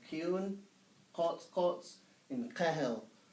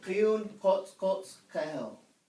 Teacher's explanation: You're using the back of your tongue, pressing it up against the back part of your palate or the roof of your mouth to make almost this pop kind of sound.